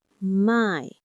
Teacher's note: You can feel your tongue gliding from a to e. That's our def thong. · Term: gliding sound